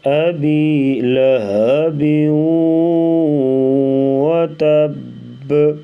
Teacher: با کے نیچے 2 زیر کی تنوین ہے تو اس کو واو کے ساتھ ملائیں گے تو یہاں پر ادغام ہو رہا ہے.